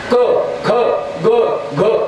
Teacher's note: क ख ग घ हे कंठे. फक्त कंठातल्या कंठातच मेळ लागला, बाकी ओठाला दाताला काही सायास नाही